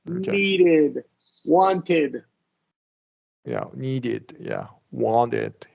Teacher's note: whether you drop the T and wanted right or not we still want to do the ID sound